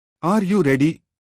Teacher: The pitch of the voice rises at the end of the sentence. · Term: Rising intonation